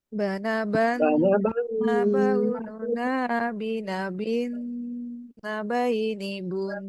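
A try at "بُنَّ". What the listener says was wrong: Nah, jangan bunna, hati-hati Pak ya. Bun, gunahnya saja yang diambil karena sukun.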